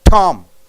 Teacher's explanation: Tom how do you say Tom T you say Tom there is a sharp burst of air over the tip of the tongue Tom so burst of air from the tip of the tongue